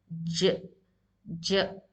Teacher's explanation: As you can see in this picture, the tongue, the middle of the tongue is touching the upper roof of the mouth, and it is pronounced from the middle of your mouth. J, j. The tongue should touch the roof of the mouth or the palate of your mouth, and then it is pronounced. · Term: Jim